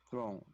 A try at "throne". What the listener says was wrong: Throne. You should emphasize the last letter of the word, not throw, but throne.